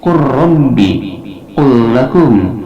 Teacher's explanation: Huruf 'lam' menyatu dengan huruf 'ra' atau 'lam' yang mengikutinya. · maka lam dimasukkan pada ra atau pada lam setelahnya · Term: idgham